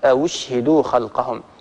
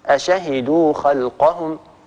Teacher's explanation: ورش رحمه الله سهل الهمزة الثانية من غير إدخال